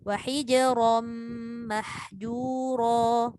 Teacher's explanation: Macam mana pun waqaf ke, dia wasal ke, ra tetap dibaca tafkhim.